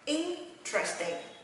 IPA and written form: ˈɪn.trəs.tɪŋ (interesting)